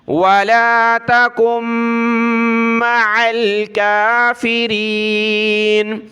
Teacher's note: یہاں کاف کو آگے میم کے ساتھ ملائیں گے، نون ساکن کو چھوڑ دینا ہے